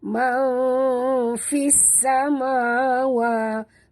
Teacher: Nun mati tapi tidak ada tanda mati di atas nun. Jadi kita sorokkan bunyi nun ini ke dalam huruf fa disertai dengung. Ikhfa hakiki.